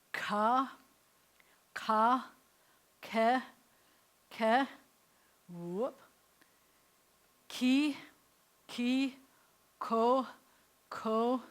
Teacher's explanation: the coof comes from further back in your mouth the Q is from further back in your mouth and it's